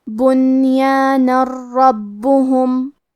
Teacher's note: کلمت ربہم، را حروف الادغام بغیر غنہ میں سے ہے، تو ہم یہ تنوین کو را میں ملا کے بغیر غنہ سے لیکن تشدید کے ساتھ یہ حکم کو ادا کریں گے